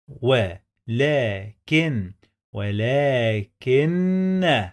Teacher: هننطق حرف النون مرتين